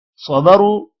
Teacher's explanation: صاد موٹا ہوگا، را بھی موٹا ہوگا، را کے بعد واو ہے، لمبا کریں گے